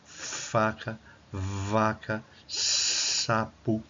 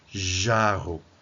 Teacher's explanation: Eh, o outro modo de articulação tem a ver com as consoantes constritivas ou fricativas. É um bloqueio parcial com o atrito do ar.